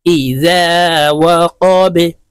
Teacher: বা যেহেতু কলকলার হরফ, নিচের দিকে ধাবিত করে ধাক্কা দিয়ে উচ্চারণ করতে হবে।